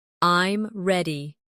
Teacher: goes down at the end of a statement